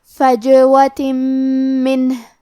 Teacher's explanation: آخری میں تے کے نیچے تنوین زیر ہے، پھر حرف المیم ہے۔ کلمت منہ، میم حروف الادغام میں سے ہے تو ہم یہ حکم کو غنہ اور تشدید کے ساتھ ادا کریں گے